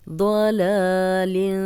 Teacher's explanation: فی ضلال کبیر، ضلال، ضاد کو موٹا پڑھیں گے، لام پہ کھڑی زبر ہے، 2 حرکات لمبا کریں گے. ضلال، تنوین آگے کاف آ گیا ہے، غنہ کریں گے.